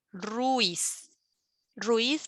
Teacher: a las vocales fíjate nomás ruiz ruiz porque no es guiado porque es un diptongo entonces ruiz sí que se pronuncia en una sola sílaba